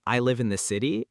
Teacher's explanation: rising intonation on statements, which makes them sound like questions